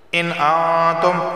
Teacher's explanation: نون ساکن کے بعد تا آیا ہے اخفا والا غنہ ہوگا